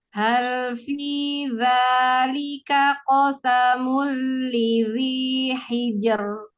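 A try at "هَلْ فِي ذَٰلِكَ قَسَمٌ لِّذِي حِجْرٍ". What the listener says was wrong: Jangan ditebelin. Hijar. Hati-hati, jangan tebelin.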